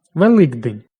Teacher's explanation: Уподібнення за дзвінкістю «к» до «г».